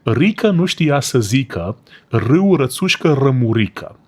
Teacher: in Romanian, you're supposed to roll your R's